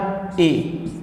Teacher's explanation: जब ए और ई मिलाकर के ए बना है, तो कंठ और तालु मिलाकर के भी यहाँ क्या बन गया? कंठ तालु।